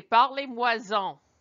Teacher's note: Often when you see moi and en or two parts of these expressions together, there ends up being a Z sound in front of them.